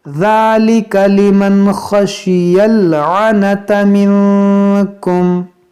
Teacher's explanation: یہاں پر دیکھیں نون ساکن کے بعد کاف ہے, یہاں پر اخفا کریں گے